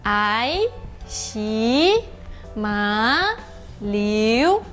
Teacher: Tem que, a partir do mi, sobe até no sol. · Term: segundo tom